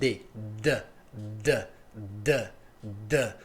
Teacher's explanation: você percebe facilmente essa vibração voiced